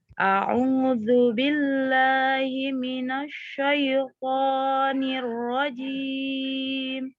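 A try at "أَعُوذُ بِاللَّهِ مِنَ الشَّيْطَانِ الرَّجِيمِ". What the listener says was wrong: Himinas, tidak himinas. Mimnya tidak bertasdid, tasdidnya di shin.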